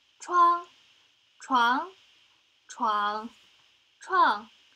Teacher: tone 1 has a high and level pitch, while tone 2 starts at the midpoint of a speaker's register and rises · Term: lexical tones